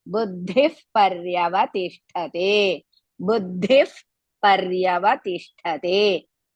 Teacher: To remove the visarga after buddhihi, buddhi, then next letter is pa. So as a result, buddhif paryavatishthate.